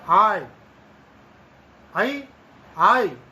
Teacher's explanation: और जिसको हम ऐ बोलते हैं वास्तव में वह ऐ नहीं है, उसका उच्चारण आई, क्योंकि आ प्लस ई दोनों मिलकर के यहां पर यह ध्वनि बनती है। तो आई, आई, आई, इस प्रकार से ये जो ध्वनियां हैं, इन दोनों ध्वनियों का उच्चारण स्थान कंठ और तालु है। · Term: संयुक्त स्वर